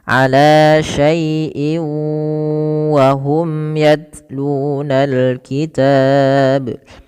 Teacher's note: Cara membacanya memasukkan tanwin yang ada pada lafal in kepada huruf waw dan ditahan 2 harakat. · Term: idgham bi gunnah